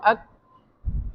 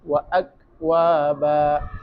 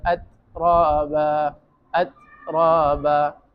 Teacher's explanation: کاف اور تا، تو اس میں تو ہمس بھی ہے لیکن شدت بھی ہے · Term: شدت حمز